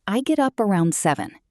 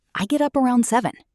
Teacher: Notice get up blends together, and around is unstressed, quick.